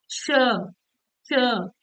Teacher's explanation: जिन वर्णों के उच्चारण में हवा रगड़ते हुए मुख से धीरे धीरे बाहर निकलती है, उन्हें ऊष्म व्यंजन कहते हैं